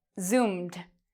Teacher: because Zoom, the verb Zoom ends in an M or a M sound, ed is pronounced like a D